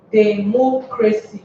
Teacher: Therefore, mo bears the stress because it is the third from the last, and because it ends with the word with the letter CY.